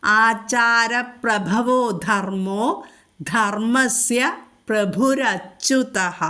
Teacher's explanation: ധർമ്മത്തിലെ ധ ഘോഷായിട്ട് ഉച്ചരിക്കു